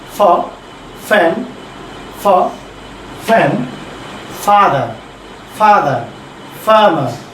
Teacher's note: আমি আবার বলছি দেখেন প্লিজ, এটা হচ্ছে আপার টিথ লয়ার লিপ